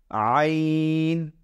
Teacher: তাহলে আমরা কি করব, নিচে এখানে লিখে দেব আইন, আর মুখ দিয়ে সুন্দর করে ভেতর থেকে কণ্ঠনালীর ভেতর থেকে উচ্চারণ করব আইন